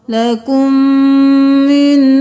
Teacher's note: میم کے ساتھ میم مل گیا، میم مشدد ہے غنہ ہوگا، لکم من. اب یہاں پہ ہم اس نون ساکن کو چھوڑ کے جس پہ تشدید ہے اس کو پڑھیں گے میم زیر نون من.